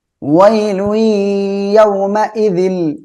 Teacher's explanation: লুই তানবীনের পরে ইদগামে বাগুন্নার অক্ষর ইয়া আসছে, গুন্নার সাথে মিলিয়ে পড়বো।